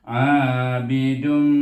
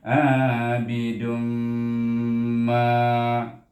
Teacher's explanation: Apabila dia bertemu dengan huruf mim di dalam kalimah yang berikutnya, maka dia akan dibaca dengan idgham bi gunnah, iaitu dengan dengung. Dua harakat dengungnya. Dan kalau nama lain ialah ma'al gunnah.